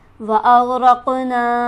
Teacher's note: और दूसरे नून पर हमारे पास खड़ी हरकत मौजूद है, इसे हम खींचेंगे एक अलिफ के बराबर। वअग़रक़ना, क़ाफ को मोटा पढ़ेंगे और इस तरह से पढ़ेंगे कि आवाज़ उछलती मालूम हो क्योंकि यहाँ पर हमारे पास हरफ कलकला मौजूद है और ना पर हमारे पास मद है लिहाजा इसे हम खींचेंगे 5 अलिफ के बराबर।